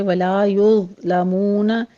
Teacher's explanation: ضا کو پر پڑھیں گے اور اس پر جھٹکا بھی نہیں دینا، سٹاپ کر دیں گے